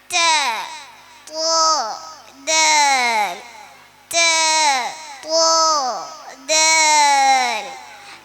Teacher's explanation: നാവിൻ്റെ അറ്റവും മേലെ മുൻപലകളുടെ മുരടും